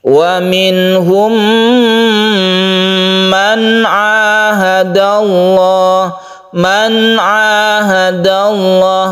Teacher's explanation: Ha ini nun mati atau nun sukun bertemu dengan Ain yang membacanya itu izhar halqi juga karena Ain termasuk huruf halqi juga huruf tenggorokan · Man ahadallah, membacanya biasa saja, nunnya tidak terlalu ditekan ya.